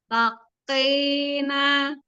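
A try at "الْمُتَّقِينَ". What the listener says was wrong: Tidak bertasydid, qafnya tidak tasydid. Muttaqina.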